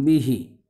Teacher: जैसे बिही, मज़बूती के साथ जो है दोनों होंठों की खुश्की नहीं लगेगी बल्कि नरमी के साथ लगेगी